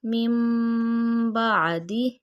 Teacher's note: من کی بجائے میم پڑھیں گے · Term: اقلاب